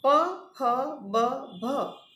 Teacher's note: ચોથા પ્રકારના વ્યંજનો છે ઔષ્ઠ્ય વ્યંજનો. પ, ફ, બ, ભ બંને હોઠ ભેળા થઈ હોઠ પાસે હવાનો સંપૂર્ણ અવરોધ કરે ત્યારે આપણને ઔષ્ઠ્ય સ્ફોટક ધ્વનિઓ વ્યંજનો મળે છે. પ, ફ અઘોષ, બ, ભ ઘોષ, તેમજ પ, બ અલ્પપ્રાણ અને ફ, ભ મહાપ્રાણ વ્યંજનો છે.